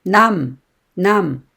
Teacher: 감을 발음할 때 입술을 꼭 붙이고 입 안에서 소리가 세어나오지 않도록 합니다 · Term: 받침 미음